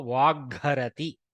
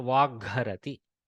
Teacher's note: So the Hakara takes the Mahaprana version of the Gakara.